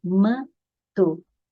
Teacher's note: o m ou n terminando sílaba lá no meio da palavra terminando sílaba no meio da palavra são apenas de nasalização da vogal anterior certo é como se estivesse simplesmente um tio na vogal anterior